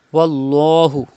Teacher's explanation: There is zaba before the lam of Allah's name. You have to pronounce lam with thicker voice.